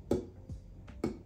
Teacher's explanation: instead of letting out any air with it like P you don't you build up pressure and then you just kind of eject it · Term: ejectives